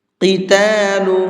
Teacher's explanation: قاف کو منہ بھر کے پڑھیں گے